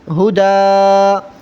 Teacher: آخری لفظ پر تنوین میں دو زبر ہے، اس لیے ہم وقفاً کی صورت میں الف پڑھیں گے، چاہے وہاں پر الف لکھا ہو یا نہ لکھا ہوا ہو.